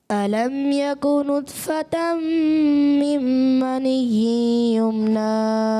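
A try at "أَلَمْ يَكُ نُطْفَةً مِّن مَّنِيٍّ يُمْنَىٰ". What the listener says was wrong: जी आपने एक तो नुतफ़ा में तौ को मोटा भी रखना है, आप खुद ही तो बताते हैं, एक्स्ट्रा मोटे हुरूफ मोटा भी करना है, एक्स्ट्रा मोटा करना है, और साथ में कलकला भी वाज़े करना है, गुन्नों की अदायगी भी पूरी करनी है।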